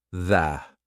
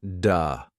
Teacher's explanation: make sure your sound is correct for example the th sound your tongue has to come through your teeth the not du that's the da sound which is not correct